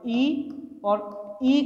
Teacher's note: अब देखिए तालु के अंतर्गत जो ई और ई अग्र ध्वनियां हैं स्वर में, ई और ई का उच्चारण स्थान क्या रहेगा? तालु रहेगा।